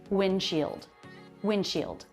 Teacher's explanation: Notice here the D comes after an N before another consonant sound. It's very common to drop that D sound